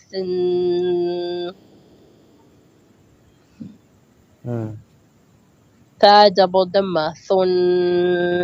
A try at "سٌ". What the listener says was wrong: Nice, excellent, mashallah.